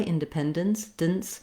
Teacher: And then this final E here in the last syllable, you may use no vowel there at all. You have what's called the syllabic N. So the N sound works as the whole syllable. It acts like a vowel and a consonant together.